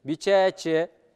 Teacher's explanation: Бичачи, оказывается, вторая вторая гласная, она немножко долго, нужно тянуть